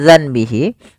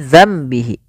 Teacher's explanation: suara nunnya kita ganti dan dibalikkan menjadi suara mim. Awalnya zanbihi menjadi zambihi karena di sini ditandai dengan mim warna kecil berwarna hijau. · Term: iqlab